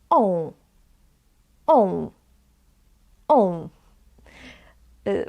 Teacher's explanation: Because they are being produced sometimes, usually, with using of your nose. So one way of pronouncing this letter is to say O, not A, but O, and add a nasal sound. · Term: nasal vowels